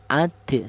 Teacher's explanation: Ada suara pantulan, jadi cara bacanya dipantulkan ya. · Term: qalqalah sughra